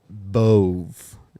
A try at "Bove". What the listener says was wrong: There's an E at the end of his name, so we got to pronounce the vowel.